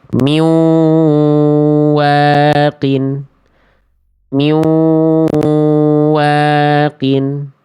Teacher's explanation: Bunyi n-nya dileburkan ke huruf wau. Bukan hanya sekedar lebur, tapi ada dengungnya, ada sengaunya. Setelah itu baru deh tahan dua harakat, bukan dua rakaat. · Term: idgham bigunah